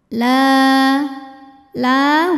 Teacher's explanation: cara membacanya dipanjangkan lamnya dua harakat saja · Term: Mad Thobi'i